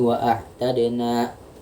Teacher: Di sini ada hukum mat asli juga yaitu nun dengan harokat fathah bertemu dengan alif, satu huruf mat, dan ini dibaca panjang 2 harokat